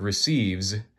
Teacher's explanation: if I pronounce the word receives, that S at the end, it makes a Z sound